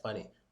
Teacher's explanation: the E sound is in the Y at the end of the word, but we don't really stress it. It's just like funny.